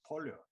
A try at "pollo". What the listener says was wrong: It's pollo, you don't pronounce the double L.